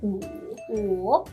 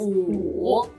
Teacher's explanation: You have to go down and then go up. So it's wu. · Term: third tone